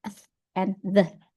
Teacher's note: next is dental. Its tongue touch the teeth.